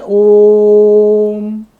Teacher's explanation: दूसरा उदाहरण देखो आप ओम यहां ओ के पीछे देखो हम ओम का उच्चारण करते हैं। ओम तो ओ को लंबा करते हैं। लंबा खींचते हैं। स्वर ध्वनि को लंबा खींचते हैं। तो ओ जो स्वर हुआ वो प्लुत स्वर हो गया। · ओकार का उच्चारण सर्वत्र प्लुत ही किया जाता है। ओम में जो ओ का उच्चारण किया जाता है वो हर हमेशा प्लुत में ही किया जाता है